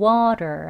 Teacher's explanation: 그래서 어떤 소리까지 나느냐면요. 이 트 소리가 르, 르, 르, 리을에 해당하는 소리까지 나요. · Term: flap t